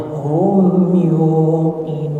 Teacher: antara huruf hum dan yuqinun jangan ada jeda. Langsung disambung aja.